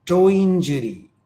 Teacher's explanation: In a phrase like toe injury, when we say that in a speed, toe injury, it sounds like we are putting a vowel sound E after the sound ya.